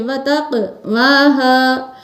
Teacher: قاف پر قلقلہ کریں گے، اس لیے اس کی آواز کو اوپر اٹھا کے پڑھیں گے